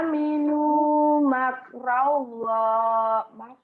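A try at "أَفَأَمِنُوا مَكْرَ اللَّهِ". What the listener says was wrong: Afa aminu makro. Ro-nya jadi ro. Makrollah. Kan ro. Jawa angka 2 loro. Nggak lora. Ro. Makrollah. Tebel tafhim. Makrollah.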